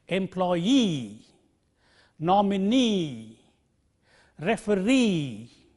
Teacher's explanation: if a word ends in EE the stresses on the last syllable of this word